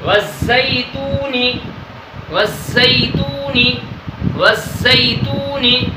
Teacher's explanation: الف اور لام کو نہیں پڑھا، ڈائریکٹ واو کو زا کے ساتھ ملایا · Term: حروف شمسی